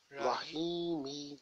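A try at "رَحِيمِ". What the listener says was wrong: Yes, Rahimi, correct.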